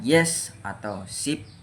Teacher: Nah, cara kerjanya itu bagian tengah atau depan lidah dinaikkan dan menyentuh atau mendekati langit-langit keras